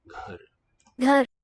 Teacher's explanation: This is a voiced aspirate g